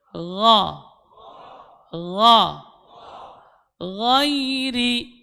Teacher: Sekarang huruf gha keluar dari ujung tenggorokan, adna, min adna al-halqi, gha, gha, ghairi, tidak boleh ada getarannya, ya, gha, ghairi, masih ada getaran, tidak boleh ada getarannya, ghairi, غير المغضوب عليهم mau.